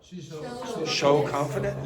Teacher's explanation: it's a common thing for people from the Netherlands to use a shh very often in place of s